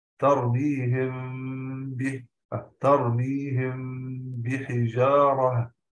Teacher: تنبيه، يتحقق الإخفاء للميم الساكنة بانطباق الشفتين انطباقا يسيرا أي ملامسة عند النطق بها مع إثبات الغنة بمقدار حركته، لا بد، مثلا ترميهم بحجارة، ترميهم ملامسة للشفتين مع إثبات الغنة بمقدار حركتين، ترميهم بحجارة، لامسنا الشفتين ملامسة خفيفة مع إثبات الغنة بمقدار الحركتين